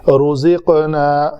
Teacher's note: قاف کے اوپر کلکلا کریں گے کیونکہ قاف ساکن ہے۔ یہ کیا ہے کہ قاف، تا، با، جیم، دال، یہ 5 حروف ہیں، جب یہ ساکن آئیں تو ان کے اوپر کلکلا کیا جاتا ہے۔